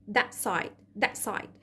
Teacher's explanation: الت ساوند هيتحول لجلوتال ستوب، يعني صوت شبه الهمزة كده